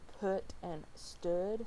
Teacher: Then you have the upsilon, sometimes known as the upsilon. It's a high back rounded lax vowel, and some examples are put and stood, so it makes that sound.